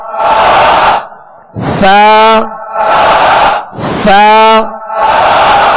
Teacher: زبان کا سرا اوپر کے دانتوں کے اندرونی کنارے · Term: سا کا مخرج